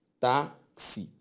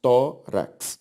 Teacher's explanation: A sílaba tônica de todas essas palavras é a penúltima.